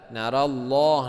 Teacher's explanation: Ra-nya dibaca tebal. Narallah, lafaz Allah juga dibaca tebal, ya, panjangnya 2 harokat